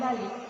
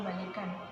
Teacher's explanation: vokal I diucapkan rendah akan tetapi ketika mendapatkan sufiks an sehingga menjadi kata balikan bunyi I berubah menjadi tinggi pada kata balik bunyi yang mengikutinya adalah hamsa atau glotal stop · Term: modifikasi vokal